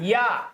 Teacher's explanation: या का उच्चारण स्थान तालु होता है